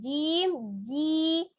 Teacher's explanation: cara membacanya Tengah lidah bertemu dengan langit-langit di tengahnya